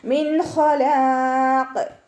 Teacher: മിൻ ഖലാഖ്, നൂൻ സാക്കിനയ്ക്ക് ശേഷം ഇവഹാറിൻ്റെ ലെറ്റർ ആയിട്ടുള്ള ഹ വന്നിട്ടുണ്ട്. നൂൻ സാക്കിനയെ വ്യക്തമാക്കി മണിക്കാതെ ഉച്ചരിക്കുക. മിൻ, നൂനിൻ്റെ സൗണ്ടിന് വ്യക്തമായിട്ട് അവിടെ കേൾക്കണം.